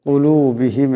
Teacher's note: বড় কাফ আছে, আওয়াজটা গলা থেকে আনতে হবে।